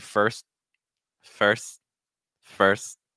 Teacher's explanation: You can also pronounce it with more of like a held T.